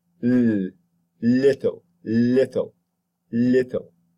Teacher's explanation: the tongue tip rises to meet the alveolar Ridge that makes it an alveolar sound